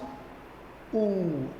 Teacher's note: tongue and when we pronounce ooh automatically you can observe that movement of the tongue is backward right back side of the tongue is involved in the production of this sound and sometimes we see the tongue is very close to upper